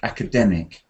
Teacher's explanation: the stress pattern is on the third syllable, like academic